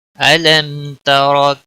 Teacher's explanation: أَلَمْ تَرَ كَيْفَ فَعَلَ رَبُّكَ أَلَمْ میم پر اظہار ہوگا، میم ساکن کے بعد تا آیا ہے اس لیے یہاں پر اظہار ہوگا۔ اس اظہار کو اظہار شفوی کہتے ہیں۔